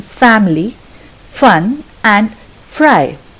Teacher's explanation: The lower lip touches the underside of the front teeth, but loosely. So there is a little bit of space through which the air travels. It creates a hissy, friction-like sound. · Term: fur sound